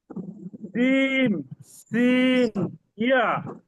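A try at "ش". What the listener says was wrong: হ্যাঁ, দুই পাশে দুইটা হয়েছে, সিনটা মাঝখানে এটা আরেকটু হতে হবে। আরেকটু, এটা সিটি হবে না, শুধু শক্ত হবে। শিন।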